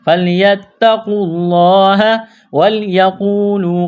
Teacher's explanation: فَلْيَتَّقُوا اللَّهَ، تا میں سختی کریں گے، قاف کو موٹا کرنا ہے، واو اور الف کو نہیں پڑھیں گے، لفظ اللہ کے نام سے پہلے پیش ہے، لفظ اللہ کے نام کو موٹا کرنا ہے · واو ساکن سے پہلے پیش ہے، واو مدہ ہے، ایک الف کے لمٹ میں کھینچنا ہے